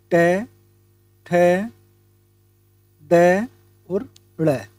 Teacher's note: सी ध्वनियां है जो मुर्धन मुर्धन्य स्थान से बोली जाती है वह है हमारा ट ठ ड और ड़ यह हमारा मूर्धन्य है